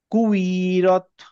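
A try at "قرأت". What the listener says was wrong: আপনি যে কুই টান দিলেন, এই টান দেওয়ার মতো কিন্তু ইয়া নাই এখানে।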